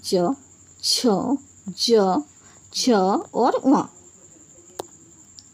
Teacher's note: च वर्ग को तालु यानी कि मुंह के ऊपरी भाग की सहायता से बोला जाता है